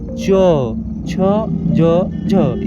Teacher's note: ठीक है, ट्रिक है इसे ऐसे समझे कि पहले दरवाजा बंद हो रहा है फिर धीरे से खुल रहा है, यानी हवा के झोंकों से। स्पर्श संघर्षी व्यंजन में पहले जीभ या ओठ किसी अंग को स्पर्श करते हैं, फिर थोड़ा संघर्ष होता है और आवाज निकलती है।